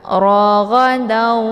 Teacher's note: Maka ketika ada tanwin berhadapan dengan huruf waw, maka ini dinamakan dengan idgham bi gunnah. Cara bacanya yaitu didengungkan. Raghadau, jadi ditahan dulu lebih kurang 2 harokat